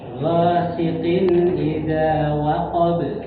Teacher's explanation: huruf sin pada kalimat ghasiqin dan hasidin biasa aja Pak ya, biasa aja. Jangan nanti mirip seperti huruf shin.